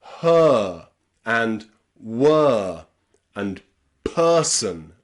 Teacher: It's a really relaxed sound. We start with our mouth in the same position that you make the schwa sound in English